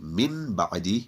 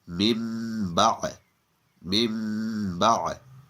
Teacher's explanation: The rule of iqlab is, if after noon sakin or tanween, the letter ba appears, then the pronunciation of the noon in the noon sakin or tanween will be changed into a meme. And it will be read with ikhfa, so it will be read with ghunna.